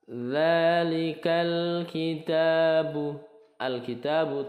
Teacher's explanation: kitabu tetapi langsung ke lam sukunnyaal bacaannya Ini masuknya izhar qariyah dibaca izhar jelas mananya yang dibaca jelas lam sukunnya